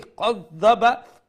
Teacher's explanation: Now if we say qadhaba, we are saying with a fuller sound. So make sure the qaf with the dotted one, the dotted qaf, that is the full mouth one.